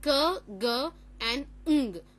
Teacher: The active articulator is the back of the tongue, and the passive articulator is the soft palate. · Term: velar sounds